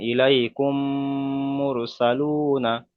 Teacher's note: সাকিনের ডান দিকে পেশ এসছে, ওকে ওয়াও মাদ্দা বলা হয়। ওয়াও মাদ্দাকে সর্বদা একালি পরিমাণ টান দিয়ে পড়তে হয়, যেমন ইলাইকুম মুরসালুনা।